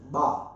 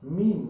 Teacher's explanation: با میں دونوں ہونٹوں کی تری با، اور میم میں دونوں ہونٹوں کی خشکی، یعنی خشک والا جو حصہ ہے سوکھا والا، ہاں وہ میم ہے، دونوں ہونٹوں سے ادا ہوتے ہیں میم.